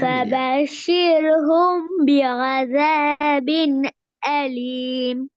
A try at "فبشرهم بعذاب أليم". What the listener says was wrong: அலீம், அதை நீட்டி ராகம் எடுத்து ஓதுங்க. فبشرهم بعذاب أليم.